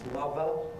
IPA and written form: ˈmʌvə (Mother)